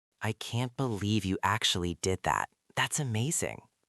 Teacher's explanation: It went up high on believe. And then it went down and up on amazing. It was like a roller coaster.